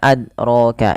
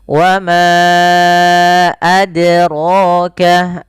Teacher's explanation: Kemudian pada lafal adraka, di sini ada huruf dal yang berharokat sukun. Dal memiliki salah satu sifat namanya qalqalah, yaitu memantul. Maka ketika membaca huruf dal tidak boleh tidak memantul.